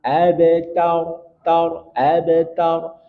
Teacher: ada ba yang punya sifat Qalqalah karena di tengah kata maka qalqalahnya sugro tidak terlalu nampak